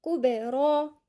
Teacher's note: نحافظ على القلقلة اللي هي تكون مفتوحة. كبرى، والراء هنا مفخمة مع المد اللي هو الألف الصغيرة، مد طبيعي مقدار حركتين